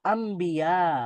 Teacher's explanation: ন সাউন্ডটা পুরাই চেঞ্জ হয়ে ম হয়ে যাবে ন টা হয়ে যাবে মজন্য এই বটাকে বউটাকে বা কে বলা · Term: ইকলাব